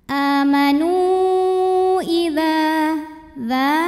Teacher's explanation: karena ada Alif didahului baris fathah maka dzal panjang 2 harokat